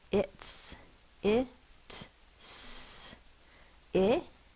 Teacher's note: It says the S because the t is not a voiced sound. D is the voiced sound for this.